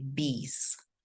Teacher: if I want to make the plural, I'm going to say bees with the Z, not with the S, because the vowels are, all vowels are voiced.